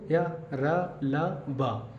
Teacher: य र ल और व है यह सभी आपके सघोष ध्वनियां है कैसी है सघोष ध्वनियां है जोर कम लगाना पड़ेगा लेकिन स्वर तंत्र में कंपन अधिक होता है